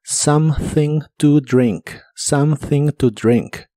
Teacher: La O de something se pronuncia como a, la e no se pronuncia. Y la th se pronuncia soplando entre la punta de tu lengua y los dientes de arriba.